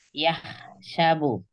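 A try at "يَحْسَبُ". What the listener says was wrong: Yah lebih ringan lagi. Enggak pakai kotor, jernih.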